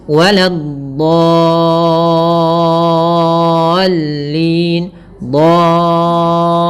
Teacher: Panjangnya yaitu 6 harokat. Caranya adalah kita memanjangkan dotnya dulu sepanjang 6 harokat, baru masukkan ke lam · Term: mad lazim kalimi mutsaqqal